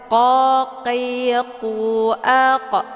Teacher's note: huruf q letaknya di Pangkal lidah Jadi dibacanya tebal · Pangkal lidahnya menempel di langit yang lunak. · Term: huruf qaf